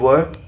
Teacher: दंतोष्ठ होता है, दांत और ओठ, तो ऊपर के दांत और निचला होठ, जैसे कि आप बोलेंगे व।